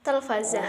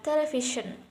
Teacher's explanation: ada perubahan antara bahasa Arab dan bahasa Inggris yaitu vokal A dan vokal E